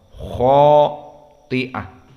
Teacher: karena kha di sini mufakhamah, maka alif di sini pun mufakhamah